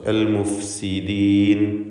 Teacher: താഴെ ചുണ്ടിൻ്റെ മധ്യഭാഗവും മേലെ മൻപല്ലിൻ്റെ അറ്റവുമാണ് ഫാഇൻ്റെ മഖ്റജ്.